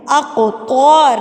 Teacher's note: قاف حروف قلقلہ، اس کو تھرتھراہٹ سے پڑھیں گے